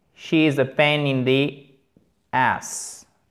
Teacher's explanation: Vous pouvez aussi dire, version vulgaire, she's a pain in the ass, et pas has, ok? Il n'y a pas de H aspiré.